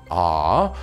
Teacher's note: your tongue is flat, there's more room than e, so longer frequencies can resonate, and you get a lower second formant